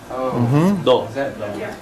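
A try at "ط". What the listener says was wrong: No, this was the emphatic T. this one's to, right?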